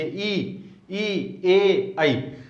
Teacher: अग्र स्वर मतलब जिह्वा के आगे के भाग से ये बोले जाते हैं। ये स्वर आप बोल के देखिए, ई, ए, आई, जीभ के आगे के भाग के अनुसार ये बोले जाते हैं, इसीलिए इन स्वरों को क्या कहा गया है, अग्र स्वर।